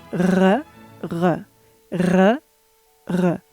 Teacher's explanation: the modern French R is called uvular because it's positioned here.